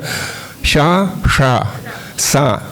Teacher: ಶ ಷ ಸ ತಾಲವ್ಯ ಮೂರ್ಧನ್ಯ ದಂತ್ಯ